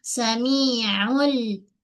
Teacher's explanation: Bahagian tengah kerongkong kita sempitkan sebab ain mempunyai sifat tawassud. Okey. Makhrajnya tengah kerongkok.